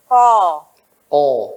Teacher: lidah paling dalam belakang bertemu dengan langit yang lunak